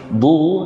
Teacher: Du dibaca dengan memonyongkan bibir, yang dhimamus syafatain.